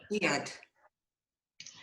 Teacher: Iad. Now the D in that is like a th, like the TH when you say the